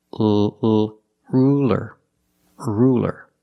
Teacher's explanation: Use a light L. It's straighter.